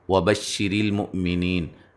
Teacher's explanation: را کو جو ہے وہ باریک پڑھیں گے، حمزہ کو جھٹکے سے ادا کریں گے، نی یا مدہ ہے، اور وقفاً بڑی مد کے ساتھ پڑھ سکتے ہیں۔